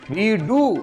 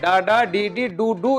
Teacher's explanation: என்று டூ இயல்பாக டா டா டி டூ டூ என்று சொல்லுகின்ற போது வாய் குவிந்து ஒலிக்கின்ற அந்த முழுமையான உகர நிலை அங்கு இல்லை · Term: குற்றியல் உகரம்